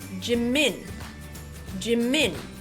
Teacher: notice how that first syllable is very short it's almost over as soon as we see it instead of